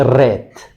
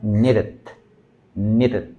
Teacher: la flap tiene que ser muy muy rápida y un solo tope